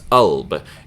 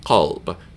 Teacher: In a lot of the Middle Eastern dialects of spoken Arabic, the qaf gets dropped from the alphabet, so this becomes alb instead of qalb